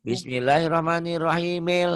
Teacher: hamzah washol itu apabila disambung tidak bunyi dia